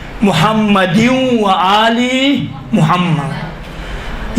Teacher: ادغام کا معنی یہ ہے کہ یہ تنوین یا سے مل جائیں گے، یا کے ساتھ تلفظ ہوں گے